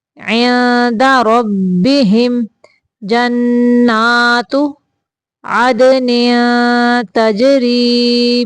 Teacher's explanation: تجری من تحتها الانہار، عدن ادھر بھی اخفاء کا قاعدہ ہے، تنوین کو چھپا کے ناک سے نکالیں گے، تنوین کی آواز کو